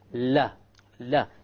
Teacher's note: the letter lam or la originates from the front edge and not the tip.